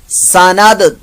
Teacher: दाल साकिन का ये कलकला हो रहा है